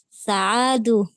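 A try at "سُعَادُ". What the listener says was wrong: Pakai doma ya, su'ad.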